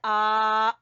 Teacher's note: हमजा का भी मखरज हा वाला ही है गले के आखिरी हिस्से से